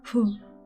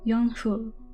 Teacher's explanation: Gotta get that breathy H in there.